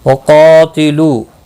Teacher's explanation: قاف مستعلیہ ہے، پر پڑھا جائے گا، اس کے ساتھ الف بھی آیا ہے، یہ بھی پر پڑھا جائے گا۔ یاد رکھیں حروف مستعلیہ کے بعد جب ایک ہی کلمے کے اندر الف بھی آتا ہے وہ بھی پر پڑھا جاتا ہے۔